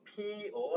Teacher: 피어 할 때 이 여는요, 자, 이에서 시작을 해서 어에 끝나요. 그래서 여가 되는 거란 말이야. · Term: 반모음 첨가